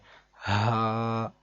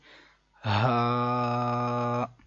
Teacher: یہ حلق کے نیچے والے حصے سے ادا ہوتا ہے، جیسے کہ ہمارے سینے سے ڈائریکٹ آواز باہر آئے